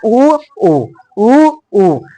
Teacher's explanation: उसके बाद ओष्ठ से देखिए, हर्ष उ और दीर्घ उ, तो हर्ष उ दीर्घ उ नहीं बोलना है, हमको तो समझ में आता है ये हर्ष है, हर्ष उ है, ये दीर्घ उ है, इसको सिर्फ बोलना है उ। आप देखिए होठ का प्रयोग हो रहा है, उ और उ दोनों गोल होता है ना, होठ गोल हो जाता है